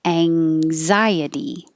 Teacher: The AN spelling is actually ANG because you're putting your tongue up in that NG combination position